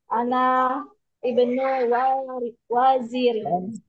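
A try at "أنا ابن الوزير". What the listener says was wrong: Jangan anak ibnu, sambung saja. Anaba.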